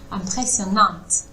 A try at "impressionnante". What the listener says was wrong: Ouais, mais pas Nantes. Impressionnante. Impressionnante. Ouais, il faut juste pas faire le impressionnante. Il faut pas qu'il y ait le N qui se prononce.